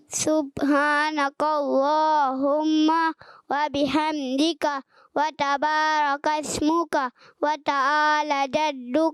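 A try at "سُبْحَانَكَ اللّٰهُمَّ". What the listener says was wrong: ماشاءاللہ اچھی کوشش کی ہے۔ تھوڑی سی مسٹیک مجھے سین میں محسوس ہوئی۔ کہہ دیجئے سبحان اللہ۔ من جدہ، جو کوشش کرتا ہے وہ۔ جی پیارے بچے بلال آپ سنائیں۔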